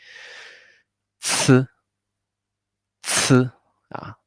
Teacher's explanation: this one sounds like a TS, the TS sound, but with a lot of air, very strong air pop out.